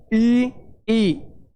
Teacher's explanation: जैसे अपने प्रैक्टिकल करके भी देख सकते हैं। संवृत स्वर में अपना मुंह लगभग बंद होता है, जैसे ई।